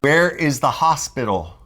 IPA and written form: wɛr ɪz ðə ˈhɑː.spɪ.t̬əl (WHERE IS THE HOSPITAL)